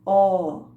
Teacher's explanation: no ó, aquele corpo mais fundo da língua faz um movimento em direção ao céu da boca, ó, que é muito diferente do movimento da língua no I.